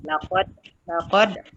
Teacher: qalqalah sughra dibaca dengan lantunan nipis